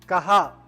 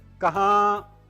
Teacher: तो आप अलीफ और ई ये मुसव्वते हैं, अलीफ और ई मुसव्वते हैं, आप उन्हें सादा कहा भी कह सकते हैं, नूने गुन्ना के साथ कहां भी कह सकते हैं